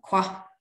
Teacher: word final low tones fall slightly · Low tone on a short vowel, qua, return.